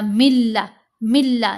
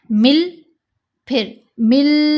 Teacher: نون کی آواز مکس ہو گئی لام کے اندر ہی، یا یوں کہہ لیں سادہ لفظوں میں نون خاموش ہو گیا، نون کی آواز سنائی نہیں دینی چاہیے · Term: ادغام